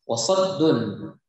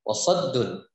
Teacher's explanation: tanwin berjumpa dengan huruf ain, a, maka dibaca tidak dengung, yaitu hukum bacaan izhar, jelas. Wasaddun, ya bacaan izhar, jelas, tidak berdengung.